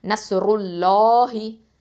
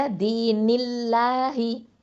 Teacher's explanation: அல்லாஹ் அப்படிங்கிற வார்த்தைக்கு முன்னாடி ஃபத்தாவோ தொம்மாவோ இருந்தால் தஃஹீமா உச்சரிக்கணும். கெசரா இருந்துச்சு அப்படின்னு சொன்னால் தர்க்கைக்காக தான் மெல்லினமாக தான் உச்சரிக்கணும்.